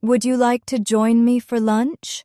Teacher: Make sure your voice rises slightly at the end, like a question. It makes you sound inviting and kind.